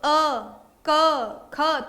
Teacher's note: क वर्ग जो है वो पूरा कंठ से बोला जाता है। · अब कंठ से आप अ का उच्चारण करके देखें तो ये किससे होता है, कंठ से। आपकी जो ध्वनि है वो कहीं नहीं टकरा रही, सीधा गले से निकल रही है, कोई भी व्यवधान नहीं है, कोई भी व्यवधान नहीं है।